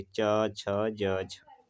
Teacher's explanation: जब आपका आपके मुँह से निकलने वाला जो हवा है, जब वो स्पर्श करेगी और संघर्ष के साथ बाहर निकलती है, तो उन्हें स्पर्श संघर्ष व्यंजन कहलाते हैं।